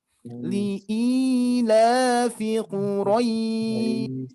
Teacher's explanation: Di sini pun juga hati-hati tidak dibaca Quraisy, hati-hati, tapi Quraisy ya. Quraisy dibaca panjang, kita cukup baca saja 4 harokat biar konsisten. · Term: madlin